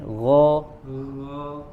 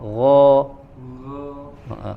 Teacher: Huruf ghain sedikit tebalkan lagi, arahkan suaranya ke langit-langit.